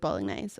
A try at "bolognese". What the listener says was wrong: Did you just pronounce the G? Did you just really stick that G? Bolognese? Did you stick the G in there real hard? Bolognese. Doesn't the G just sort of float through?